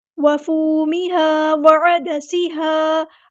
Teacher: ادا کرنا ہے، دال ہمارا لائٹ لیٹر ہے، باریک پڑھیں گے، سین کی سیٹی واضح کریں گے